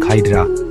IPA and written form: ˈhaɪdrə (Hydra)